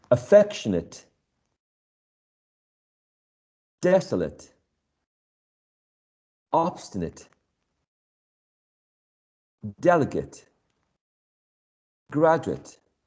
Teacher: The last syllable here has a schwa.